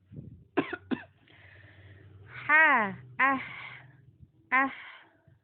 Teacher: Kemudian huruf ha sifatnya rokhwa, mengalir suara.